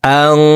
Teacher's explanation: এই নুন সাকিনকে নাকের ভিতরে লুকাইয়া গুন্নার সহিত পড়তে হবে